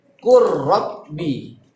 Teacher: Huruf lamnya hilang. Bukan kul rabbi, tapi masuk ke huruf ro. Kul rabbi. Dilebur ya.